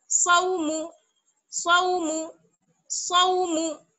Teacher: Third number पर देखिए, स्वाद वाव जबर सौ, स्वाद को मोटा, वाव को बारीक, और मीम को भी बारीक, स्वाद वाव जबर सौ, मीम पेश मु, सौ मु सौ मु, मीम को भी जल्दी पढ़ेंगे, क्योंकि मीम वाव पेश मु नहीं है, बल्कि क्या है, मीम पेश मु, जल्दी से पढ़ेंगे, सौ मु सौ मु सौ मु, औफी हौला सौ मु, औफी हौला सौ मु सौ मु।